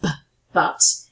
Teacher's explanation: there's a bilabial plosive with the first but